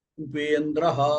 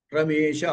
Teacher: అంచేత అకారానికి ఇకారం పరంగా ఉంటే రెండిటికి కలిపి ఏకారం వస్తుంది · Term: గుణసంధి